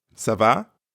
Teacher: just make sure your voice rises a little at the end so it sounds like a question